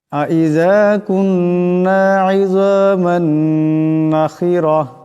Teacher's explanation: এখানে নুন মুশাদ্দাদের সাথে ইদগাম হয়ে যাবে। মিমের উপর দুই জবরের তলবিন, এরপর নুন আসছে, এখানে ইদগাম হয়ে যাবে। আইযা কুন্না ইযামান নাখিরা, নুন জবর না, খাজির খি, রা জবর রা, তা দুই জবর তান, নাখিরাতান।